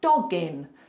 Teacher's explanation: Now the next link is a little bit easier because we have a hard consonant dog and then a vowel. When you've got that hard consonant followed by a vowel, just push the two together like it's one word. · You've put the G in front of the next word. It's one sound.